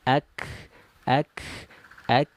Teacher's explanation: huruf Kaf ini sedikit ke depan daripada huruf qf menyentuh ke langit-langit lunak dan keras sekaligus · Jadi pangkal lidahnya menyentuh ke langit-langit lunak. Nah, sedangkan kaf ini agak ke depan daripada huruf qaf, menyentuhnya ke langit-langit lunak dan keras.